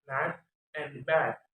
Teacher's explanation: it is made with mid-low tongue elevation, the front part of the tongue, and unrounded lips. This vowel is a short vowel written phonetically A in mad and bad. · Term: Mid-low front unrounded